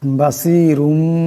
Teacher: রার উপর দুই পেশের তনবিন এরপরে বা আছে এই দুই পেশের তনবিনকে মিম দিয়া বদলায়া পড়তে হবে